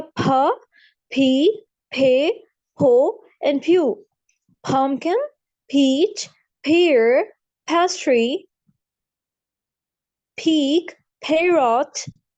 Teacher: पी में हा की आवाज आए, लाइक माउथ से आपकी बहुत सी हवा एक्सहेल हो. जैसे हो गया फ, फी, फे, हो, and pew.